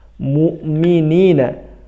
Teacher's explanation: minina panjang ni-nya mad asli ya